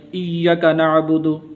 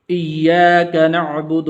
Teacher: یا کے آگے الف بھی ہے، اس کو لمبا کرنا ہے، تو بعض لوگ اس کو لمبا نہیں کرتے، تو وہ بھی غلط طریقہ ہے۔